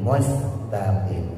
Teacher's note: sinnya ditipisin ujung lidah taruh bawah